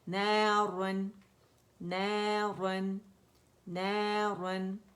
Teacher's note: نارن باریک ہوگا، کسرتین ہے نا، کسرہ کے ساتھ باریک ہے تو کسرتین کے ساتھ بھی را جو ہے وہ باریک پڑی جائے گی روانی میں